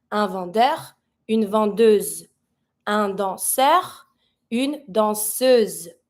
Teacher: I need to pronounce my S now because it's ahead in front of the mute E. It's between two vowels, so S will take the Z sound.